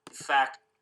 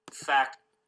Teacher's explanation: the F here, the initial sound, it's clearly a low amplitude sound